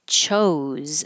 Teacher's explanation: it looks like an S, but sounds like a Z